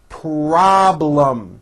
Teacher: this has a strong r and then in the second syllable there's a strong l